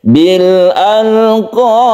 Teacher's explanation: ada qalqalah kubra yang kita baca karena dia itu waqaf, maka kita qalqalahkan. Bil alqab, jadi dipantulkan, dan ini termasuk mad arid lisukun.